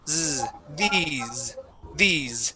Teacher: we want to say a uh a voiced S at the end